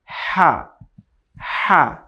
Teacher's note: হা এটি হচ্ছে খুবই নরম একটি হরফ, যদি এখানে আপনি জবর দেন উচ্চারণ হবে হা জবর হা, হা, হা। একটু বাতাস বের হচ্ছে এবং নরম উচ্চারণ হচ্ছে হা, হা